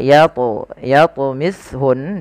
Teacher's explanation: ada bacaan qalqala wajib kita pantulkan lafal huruf th Jangan dibaca Yun tapi harus memantulun kemudian hati-hati di dalam melafalkan